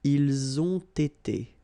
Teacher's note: You get first the liaison z, and then you get the t.